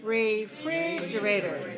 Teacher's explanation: what about the vowel in the first syllable make it weak okay if you say re too clear make it weak okay